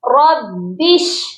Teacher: ربی شرح لی اکثر لوگ اس کو پڑھتے ہیں، شین کے اوپر کوئی بھی حرکت نہیں ہے، شین ساکن ہے۔ با کو ہم نے شین کے ساتھ ملا کر پڑھنا ہے